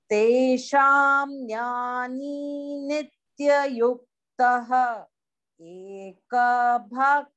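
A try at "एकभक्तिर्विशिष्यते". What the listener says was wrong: No. It is one word. Ekabhaktir vishishyate. You can't speak it. Of course, where there is no halanta, you have to chant it full.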